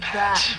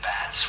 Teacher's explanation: you'll have pat with a soft puff, and then bats with the buzzing sound